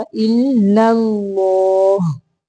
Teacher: پہلا لام باریک ہے، دوسرا موٹا